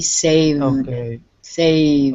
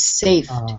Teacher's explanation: having a little bit of trouble with the v sound because if you don't have the v in your throat it sounds like f